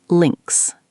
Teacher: The I sound is short, like in sit, and the S at the end is like a Z sound.